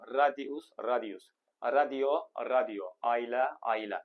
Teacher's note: tərkibində a i, i a, ə, i, iə, i o, i u, u i və a hərf birləşmələri olan sözlərin tələffüzü zamanı bu saitlərin arasına y samiti daxil edilir